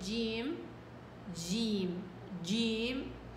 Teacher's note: الجيم الشامية فيها شوية همس، المخرج هو نفسه، ولكن همسين مش راضين يجيبوا لي صفة الشدة في الجيم، فراحوا بدلعوها فهمسوها.